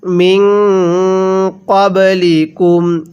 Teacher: নুন সাকিনের পরে যদি ইকফার 15 টি হরফ থেকে কোন একটি হরফ এই নুন সাকিনের পরে থাকে তাহলে নুন সাকিনটিকে গুন্নাহ করে পড়তে হয়। এখানে নুন সাকিনের পরে কফটি হল ইকফার হরফ।